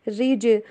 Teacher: را کے نیچے زیر آ رہی ہے، را کو باریک پڑھیں گے. رج، اور جیم کے اوپر قلقلہ ہوگا.